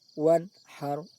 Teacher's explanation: makhraj antara nun sukun dan ha harus terpisah jelas, seolah-olah saat berbunyi nun sukun seolah-olah berhenti sejenak. Wan haru, jelas makhraj nun sukun dan ha.